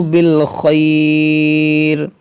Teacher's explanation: ہاں پر الٹا پیش ہے، اس کو بھی تھوڑا سا کھینچیں گے، جیسے دعاءہ بالخیر، یہاں پر وقف مطلق ہے، رکیں گے ہم، تو یہاں پر مد لین عارض ہوگا، کیونکہ حروف لین کے بعد را پر عارضی سکون آ رہا ہے رکنے کی وجہ سے